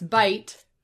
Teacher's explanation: the vowel that had been pronounced E swooped down and started low and became the diphthong I.